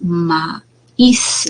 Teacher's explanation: Esta es una vocal abierta, y vocal cerrada, ¿no? Y yo distingo cuál de estas vocales tiene la mayor fuerza de pronunciación. Va a ser pues maíz, la vocal cerrada. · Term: hiato acentual